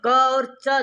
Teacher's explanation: उच्चारण स्थान अलग हो गया दोनों का। क का कंठ च का तालु अभ्यंतर प्रयत्न में तो स्पष्ट है दोनों का लेकिन उच्चारण स्थान अलग-अलग है इसीलिए दोनों सा वर्ण नहीं है।